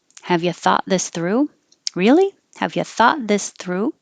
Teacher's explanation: i'm keeping my tongue further forward than i might usually because all of these sounds thought this through are almost between the teeth just a little behind maybe and loose enough so that air can keep flowing